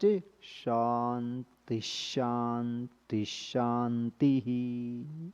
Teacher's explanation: So here two dots followed by sh, you have to quietly add one more sh there.